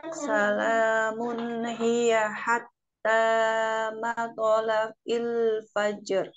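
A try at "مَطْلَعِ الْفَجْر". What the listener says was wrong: Matla'il fajr. Ya, ada qalqalah ini. Nah, jangan ragu qalqalahnya. Fajr. Fajr. Jangan dijeda ya. Jangan fajr. Ya, tapi fajr. Ya, langsung. Gak boleh ada jeda.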